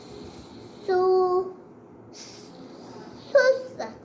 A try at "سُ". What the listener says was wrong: سا کے آگے پیش واو نہیں تو لمبا کریں گے نا واو کیوں. تو سا واو پیش کیا بنتا ہے. سو یا سو. تو پھر سو پڑھو نا.